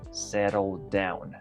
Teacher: Entre estas dos palabras tenemos el mismo sonido de consonante tanto al final como al inicio. No necesitas pronunciar settled down, sino que lo único que tienes que hacer es pronunciar el sonido de D una sola vez.